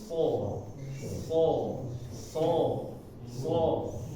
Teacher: ya dia enggak ke mana-mana dia tiduran lidahnya nah ini menekan menekan di gigi bawah gigi seri bawah tapi bagian belakang lidahnya dinaikin sedikit agar terdengar tebal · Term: huruf SH, huruf so